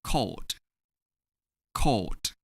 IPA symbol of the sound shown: d